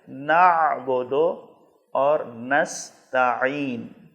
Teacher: اس کو آپ نے حمزہ اور الف کی طرح نعبد اور نستعین نہیں پڑھنا ہے، بلکہ عین کی ادائیگی کے وقت آپ کو حلق کے درمیان میں زور دینا ہے